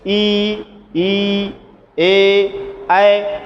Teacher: चलिए, अब अग्र स्वर समस्त अवर्तुल, अवर्तुल का मतलब होता है हमारे ओंठ समान रूप से खुलते नहीं हैं, जबकि क्या होते हैं, वो थोड़ा सा, जैसे इधर वर्तुल का जस्ट उल्टा, ई ए ऐ, हमारा मुख सपाट होता है, इसमें गोल गोल नहीं होता है